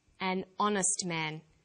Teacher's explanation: the H is not pronounced so honest sounds like it starts with a vow and where